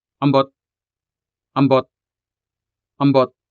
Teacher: There is that clear dismissiveness or anger register in your voice.